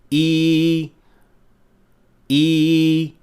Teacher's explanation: the middle of the tongue is raised almost all the way to the hard palate but without touching it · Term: e sound